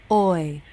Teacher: the tongue is lightly lifted and shifted a bit back so the tip of the tongue is not touching anything the ending position is the I as in sit vowel the · back so the tip of the tongue is not touching anything the ending position is the I as in sit vowel the lips relax and the tongue comes forward the tip lightly touches the back of the bottom front teeth